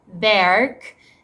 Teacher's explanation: at the end of the word we can also do it when the r is followed by a consonant for example for the word berk also for me it sounds like the english r